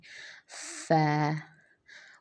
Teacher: اوپر کے جو دونوں دانت ہیں ان کے جو سرے ہیں وہ نیچے والے ہونٹ کے اوپر ہم رکھیں گے، تو وہاں سے فا کی ادائیگی ہوگی